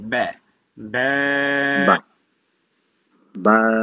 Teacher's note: বা হচ্ছে দুই ঠোঁটের ভিজা জায়গায় তো উচ্চারণ হয়